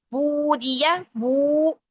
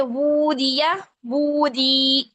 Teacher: वाव को जो है हमने दो हरकत लंबा किया उल्टा पेश की वजह से